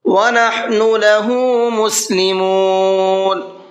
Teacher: نحن کا ہا کو حلق سے نکالنا ہے، لہو کے ہا کو کھینچ کر کے پڑھنا ہے۔